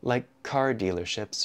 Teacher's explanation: the K in like and the C in car connect together